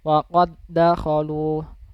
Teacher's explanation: ada dal yang berharokat sukun bertemu dengan dal juga kan yang bertasydid. Maka cara membacanya itu langsung ke dal yang bertasydid. Dal yang berharokat sukun itu tidak usah dibaca.